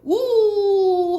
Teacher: 우 하면은 입술이 동그라미가 되잖아요. 그치? 그러면 원순인 거야. 그리고 동그라미가 아니면 평순인 거예요.